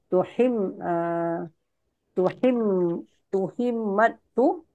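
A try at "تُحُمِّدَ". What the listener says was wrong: Tuhummid itu. Tuhum, bukan tuhim. Tuhum. Tuhum, bukan tuhim, Ibu.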